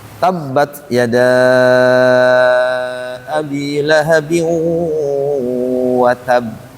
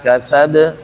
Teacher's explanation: Apabila dia bertasdid, maka qalqalahnya jangan langsung sebagaimana yang tidak ada tasidnya. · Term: huruf qalqalah